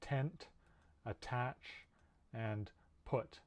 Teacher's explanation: voiceless that means there's no vibration at the voice box remember it's a stop meaning that you completely block the air flowing through your mouth for a moment as you're producing this and it's made at the alveolar ridge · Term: voiceless alveolar stop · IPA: /t/